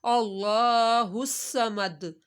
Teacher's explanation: اللہ کو موٹا، صاد کی سیٹی، صاد 2 دفعہ پڑھا جائے گا